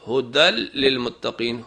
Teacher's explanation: اگر تنوین یا نون ساکن کے بعد لام آ جائے یا رے آ جائے تو آواز کو لام اور رے میں بدلنا ہے اور غنہ نہیں کرنا